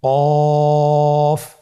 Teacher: কফ উচ্চারণের ক্ষেত্রে অবশ্যই তিন আলিফ টেনে পড়তে হবে।